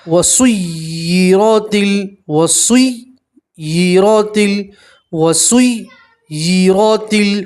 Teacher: را کے اوپر زبر ہے، را کو آپ پور پڑھیں گے